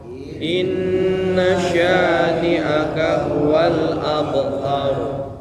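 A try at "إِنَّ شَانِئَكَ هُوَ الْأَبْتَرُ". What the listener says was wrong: Ini juga sama abtar, tebal. Nah, coba abanya tipis saja, abtar. Nah gitu, maksudnya tebal tuh dibaca abtar, abu bukan, tapi abe.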